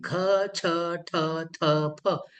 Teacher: ह आपल्याला जास्त ऐकायला येतो आणि ताकद आपल्याला जास्त लागते. अगदी छातीमध्ये ठोके वाढतात. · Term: महाप्राण